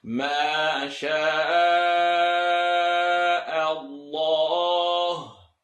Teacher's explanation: I want to hear the lam heavy.